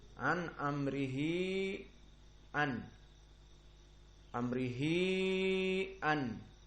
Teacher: Mad jaiz munfasil, yang mana dia dibaca antara 4 sampai dengan 5. Jadi lebih panjang dari mad silah sughra. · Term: mad silah al-kubra